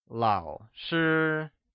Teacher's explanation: lǎo is pronounced with a falling rising tone while shī is pronounced with a high level tone